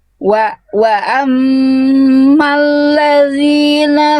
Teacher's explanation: Kembali huruf zal jangan mempet suaranya harus ngalir